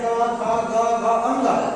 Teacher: ऐसा व्यंजन वर्ण जिसका उच्चारण किससे होता है? कंठ से होता है। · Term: कंठव्य